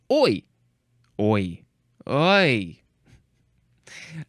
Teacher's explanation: composed of a vowel followed by a less sonorous Glide